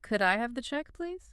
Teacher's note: Make sure it sounds like a question. The inflection goes up at the end.